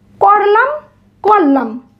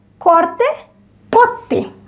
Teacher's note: রকার লোপের ক্ষেত্রে রকার লোপ পেয়ে পরবর্তী ব্যঞ্জন দিত্য হবে। যেমন করলাম করলাম, অর্থাৎ এখানে রটা লোপ পেয়ে লয়ের সাথে ল হয়েছে।